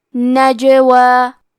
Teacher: کلمت نجوا میں جیم پہ جزم ہے تو یہاں جیم کا حکم ہے قلقلہ. قلقلہ کا معنی ہے حرف ساکن کو ہلانا، تو ہم یہ حرف کو ہلاتے ہوئے یہ کلمہ کو پڑھیں گے.